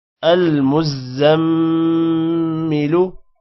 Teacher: میم پر غنہ ہوگا